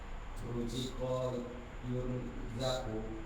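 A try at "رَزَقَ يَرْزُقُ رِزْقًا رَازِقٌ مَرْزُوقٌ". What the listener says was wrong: Razaqo yarzuqu qaf ya qafku rizqan raziqun marzuqun urzuq la tarzuq marzakun mirzakun ruziqa jangan berubah jadi ruzika ruziqo yurzaku.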